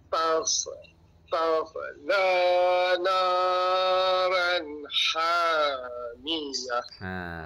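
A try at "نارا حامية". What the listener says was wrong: Ran ke ron? Jadi bacaannya ra tebal. Naran hamiyah.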